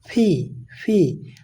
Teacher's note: ওকে, এটাকে আমরা সাধারণত বলে থাকি পি, কিন্তু এটা পি হবে না, এটা হবে ফি। এটা বলার সময় দুই ঠোঁট বন্ধ করে বাতাস বের হবে